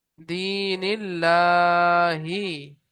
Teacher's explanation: আল্লাহ শব্দের ডান দিকে জের আসলে বারিক হবে, আর জাবার পেশ থাকলে পুর হবে।